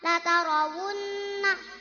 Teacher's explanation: ra tafhim sebab ra fathah